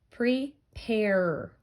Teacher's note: We still hear the R sound at the end.